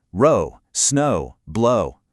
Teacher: that OW ending keeps that smooth, long O sound going incredibly strong